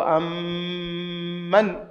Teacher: kuingiza herufi mbili zinazofanana zitamkwe kama herufi moja, lakini kwa kitambo kidogo, si kwa haraka, kwa sababu hii ni ma'al ghunna. Hii ni mutamathilaini ma'al ghunna, kwa sababu inakuja kuwa mim mushaddada kama nun mushaddada, lazima ina ghunna.